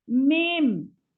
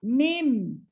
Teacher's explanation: Okey, yang lagi satu mim. Mim ni tutup rapat. Mim. Tak buka.